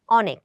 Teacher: ফলে এরকম কোনো প্রশ্ন যদি আসে, সেক্ষেত্রে আমরা হচ্ছে তিনটাকে উত্তর নিতে পারি, এবং পুরাতন ব্যাকরণ অনুযায়ী কিন্তু আমরা যদি খেয়াল করি, তাহলে আমাদের উত্তর হচ্ছে ক, অনেক। কারণ এখানে অ এর উচ্চারণ অ এর মতো হয়েছে, যেটাকে আমরা বলি বিবৃত উচ্চারণ